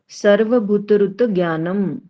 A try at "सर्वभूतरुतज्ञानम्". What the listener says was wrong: भूतरुत नहीं है, भूत है, बड़ा भू है। भूत रुत रुत रू भी बड़ा है, रुत ज्ञानम।